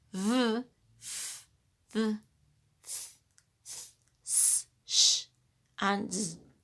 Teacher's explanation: there is a narrow passage, a very closed space for the air to escape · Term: fricatives